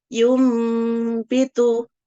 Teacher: nun sukunnya berubah menjadi mim dan didengungkan kurang lebih 2 harokat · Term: iqlab